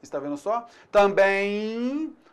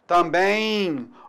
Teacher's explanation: Note então que o M em final de palavra, ele também pode produzir o som I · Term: I semivogal